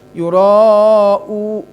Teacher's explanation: mad wajib dibaca panjang ya, cukuplah dikasih 4 juga cukup, 5 monggo